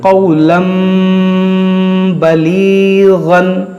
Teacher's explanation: ہم اس کو تنوین کو میم بنا دیں گے، قولاً بلیغاً. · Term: اقلاب